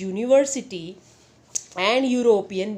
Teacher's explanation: The words university and European begin with vowels U and E, but both these words are pronounced with the U sound, which is a consonant sound.